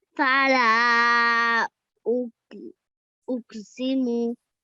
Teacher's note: So it's a blank alif coming after a letter with a fatha on the top. So we have to elongate the lam for about 3 seconds at least